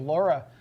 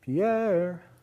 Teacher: The high is on the first syllable Laura. The high is on the second syllable of Pierre. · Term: rocket chant